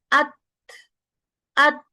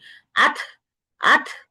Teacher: সুকুন আ, তারপরে নিঃশ্বাস আটকে, তারপরে হালকা করে হামস দিতে হবে দুর্বলটা, আত, আত।